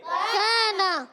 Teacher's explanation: کاف کو کھینچیں گے کیونکہ کاف الف زبر کا، اور نون کو نہیں کھینچیں